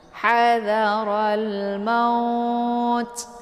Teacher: Jadi kalau misalkan sudah kita wakaf di sini, maka dari harf lain berubah menjadi mad lain. Jadi cara bacanya itu dipanjangkan ya, boleh 2 harakat.